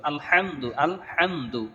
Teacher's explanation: হা এটা দুই নাম্বার মাখরাজ গলার মধ্য থেকে শস করে উচ্চারণ করতে হবে